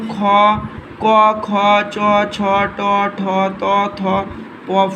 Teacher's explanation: উচ্চারণের সময় কন্ঠের কম্পন হয় না বলে কন্ঠস্বর মৃদু থাকে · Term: অঘোষ বর্ণ